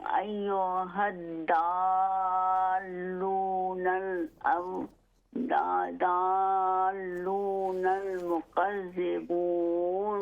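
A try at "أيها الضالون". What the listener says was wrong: ہاں جی نہیں، یہ نہیں، یہ لحن جلی ہو جائے گی، بڑی غلطی، چونکہ یہاں پر دال نہیں ہے، یہ ضاد ہے. تو ہم نے پڑھنا ہے ایھا الضالون.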